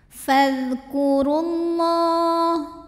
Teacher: jadi alif lamnya tidak dibaca atau dimasukkan langsung ke lam berikutnya ya, atau disebut dengan idgham syamsi.